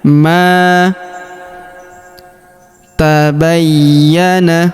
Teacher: Huruf ma kita panjangkan dua harakat karena terdapat alif di depannya. Ma tabayyana.